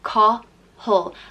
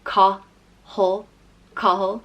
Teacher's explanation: The next name is Cathal, and Ca in Irish means battle, so Cathal means battle ruler, and it's pronounced Cathal. Like you almost don't pronounce the second A, it's just kind of the H and L put together